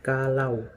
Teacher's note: Contohnya seperti kalau. Itu biasa A dan U-nya itu terdengar seperti huruf W. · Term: diftong AU